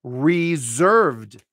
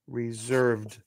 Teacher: this s becomes a voiced Z and we say this word as reserved